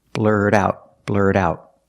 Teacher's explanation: When you say blurt out, the T in blurt is a fast D.